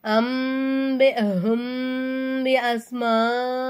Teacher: மீம் சாக்கினை குன்னா செஞ்சு ஓதணும்